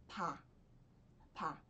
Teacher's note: Essa consoante, ela é representada na romanização padrão como B ou P, mas vocês vão ver que não é nem P de pato, nem B de bala. A gente pode até dizer que é um meio termo entre B e P · Então, lembra bastante o B e é como se você fosse pronunciar o B, só que soltando o ar